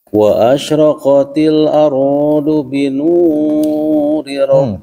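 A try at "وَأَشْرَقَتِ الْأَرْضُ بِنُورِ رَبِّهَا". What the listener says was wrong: Panjang tuh. Itu segitu kepanjangan. Ya, panjang 2 harokat itu cuma di ayun. Qala nuri rabbiha wa gitu panjangnya. Wa asyraqatil ardu binuri rabbiha wa segitu panjangnya.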